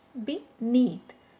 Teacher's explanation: Be is a weak prefix, so that's why the stress is on the second syllable, that is neath.